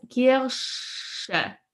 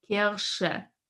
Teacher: Kirche versus Kirsche. When I try to pronounce the SCH sound in German, my lips come more forward.